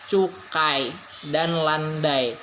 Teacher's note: yang dihasilkan bukan dua buah bunyi melainkan hanya sebuah bunyi karena berada dalam satu silabel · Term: diftong